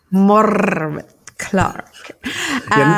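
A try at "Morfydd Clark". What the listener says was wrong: You don't have to roll the R quite that much.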